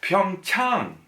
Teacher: So it's an ah. It can be transliterated into English as AH. So not a long A sound.